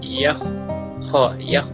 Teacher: Wa ma yakh kalau yakh tipis dia, sedangkan huruf kha huruf tebal ketika menyebutkan ditebalkan sedikit